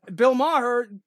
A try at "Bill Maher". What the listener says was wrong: I don't know why you have to fucking add syllables and shit.